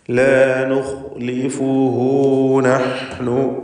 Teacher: ഖാ ഇസ്തിഅലാൻ്റെ അക്ഷരം, അതുപോലെ ഹൽഖിയ അക്ഷരമാണ്, മേലെ അറ്റമാണ്, അതായത് തൊണ്ടയുടെ മുകൾ ഭാഗമാണ് അതിൻ്റെ മഖ്റജ്. ലാ നുഖ്ലിഫുഹു നഹ്നു, ഹ വ്യക്തമാക്കി ഉച്ചരിക്കുക.